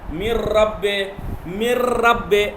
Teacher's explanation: آواز نہیں آ رہی، نہ نون کی آواز ہے، مر رب، نہ نون کی آواز ہے نہ نون غنہ کی، تو اسے کہتے ہیں ادغام بلا غنہ